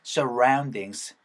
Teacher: ru 하는 입 모양이 모아지는 r 사운드입니다